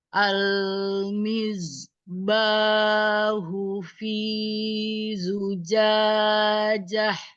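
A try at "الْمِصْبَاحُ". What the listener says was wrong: Oke tapi SH nya ini kurang hams jadinya kayak huruf zaiba bukan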